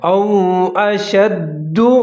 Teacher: واو ساکن اور اس سے پہلے حمزہ دونوں کو ملا کر پڑھنا ہے اور جہاں پر آپ نے ہونٹ گول کر لینے ہیں